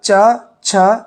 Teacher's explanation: जब आपने बोला च, छ, तो आप देख रहे हैं आपकी जीवा आपके तालु को स्पर्श कर रही है, तालु के साथ रगड़ रही है। इसीलिए इसको उच्चारण स्थल तालु में रखा गया है।